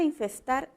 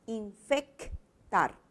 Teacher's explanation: La palabra infestar e infectar también cumplen con la misma condición los fonemas que están variando, como tú ves, es el fonema fricativo S, que ha cambiado con el fonema oclusivo K.